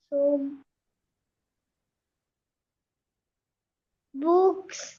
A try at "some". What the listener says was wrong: সাম। সাম, এটা সৌম হবে। স্ক্রাইবাল ও, স্ক্রাইবাল ও বলা হয় এটা।